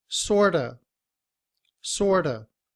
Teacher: Sort of. But in reduced form, we drop the v sound at the end of of